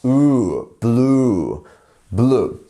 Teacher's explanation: We have blue, which is ooh. Ooh sound. You see? You have that longer vowel.